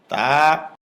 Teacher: জিহ্বার আগা উপরের দাঁতের গোড়ায় ভিতর দিয়ে লাগবে, মুখ খুলে দিবে, এক আলিফ পরিমাণ লম্বা হবে।